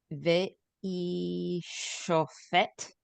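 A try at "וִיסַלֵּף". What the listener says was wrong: That's a samich, not a shin. Visalef.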